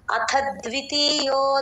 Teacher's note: ఆ ద్వి దగ్గర కొంచెం స్ట్రెస్ ఇచ్చి చెప్పాలండి